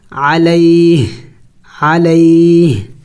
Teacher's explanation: وقف کریں گے تو وقف میں ہا کو سائلنٹ کر دیں گے